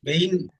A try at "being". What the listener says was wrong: Don't pronounce the letter G, no? pronunciation is not being, no.